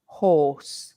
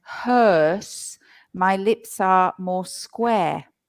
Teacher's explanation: for the OR, horse, my lips are round, horse. And hearse, my lips are more square.